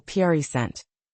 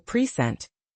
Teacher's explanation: the word present when stressed on the first syllable pent means a gift, but when stressed on the second syllable, present, it means to present something